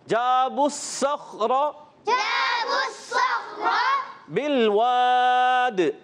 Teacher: دال میں قلقلہ ادا کریں گے وف کی صورت میں · خا کو بھی موٹا رکھیں گے مگر قلقلہ ادا نہیں ہونا چاہیے, ہلنا نہیں چاہیے اور را کو پر ادا کریں گے. · صاد کو موٹا پڑھیں گے کیونکہ صاد حرف مستعلیہ میں سے بھی ہے اور موٹے حروف میں سے بھی, اس کو اور زیادہ موٹا کریں گے, ٹھیک ہے.